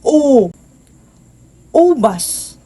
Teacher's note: Ito ay patalikod at mataas